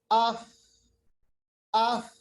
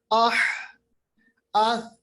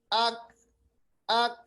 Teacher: आपके मुंह से कुछ सांस तो निकल रही है तेजी के साथ मगर आवाज खत्म हो गई, आवाज पस्त हो गई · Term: हम्स